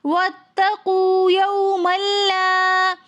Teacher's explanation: واتقوا، یومن میں میم کے اوپر 2 زبر کی تنوین ہے، لیکن آگے لام آ رہا ہے، تو اس لیے ہم یہاں پر غنہ نہیں کریں گے، یہاں پر ادغام بلا غنہ کا قاعدہ ہو رہا ہے، یہاں پر ہم پڑھیں گے یوم اللہ، پھر آگے لا کے ساتھ الف مدہ آ رہا ہے تو اس لیے ہم اس کو ایک الف کی مقدار کھینچ کر پڑھیں گے